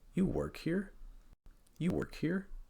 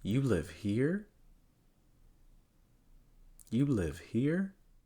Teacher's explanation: Again, notice the intonation pattern, that rising intonation towards the end.